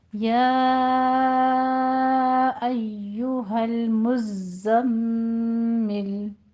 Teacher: ٹھیک ہے، یعنی کہ اس پر الف مد آ رہی ہے یا پہ، پھر درمیان میں فاصلہ ہے اور ایہا دوسرا کلمہ شروع ہو رہا ہے تو ہمارے پاس کون سی مد ہے یہاں پہ؟ مد منفصل جائز، اس کو آپ نے 4 کاؤنٹ کرنا ہے. ایو، ایشو نہیں کہنا ہے، شین یا جیم کا ساؤنڈ نہیں لانا ہے.